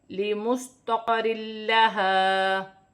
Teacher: تنوین کے بعد لام آ رہی ہے تو تنوین میں غنہ نہیں ہوگا اور الف مدہ بھی ہے.